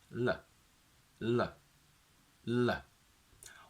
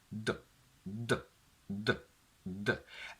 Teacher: Let's take the two sounds D and L. They're both alveolar sounds, meaning that in both the tongue tip touches the alveolar ridge. But the sound D is a plosive, meaning that there is a full obstruction.